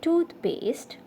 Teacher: words the stress usually falls on the first syllable so hence in toothpaste the stress is on the tooth at the beginning of the word